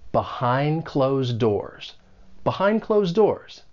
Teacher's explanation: both of the D sounds in behind and closed, they're going to elide, they come between two consonant sounds, and it's like they get muted, and you just don't really hear it. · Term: elision